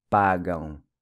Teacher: the AM pronounced with the nasal ão sound